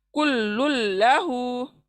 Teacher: हम लुन को, नून को छोड़कर लाम पे मिला रहे हैं, इसलिए इसको लुन का नून का आवाज नहीं आएगा। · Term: लाम का इदगाम